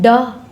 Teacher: मूर्धन्य, अल्पप्राण, घोष व्यंजन वर्ण का उदाहरण है ड